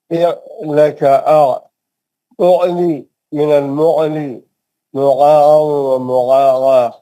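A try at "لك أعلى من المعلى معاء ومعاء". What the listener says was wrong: یہ گا نہیں یہ آئین ہے. منہ کھول کے آپ پڑھیے منہ کھول کے نکل جائے گا انشاءاللہ.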